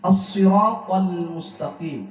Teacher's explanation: Ta-nya tebal, lamnya tipis.